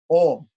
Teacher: And even the M is not a pure M. The M is also what we call anunasika, using the nasal passages also to pronounce. Not just the mouth, but when we use the M in Om, it is called an anuswara.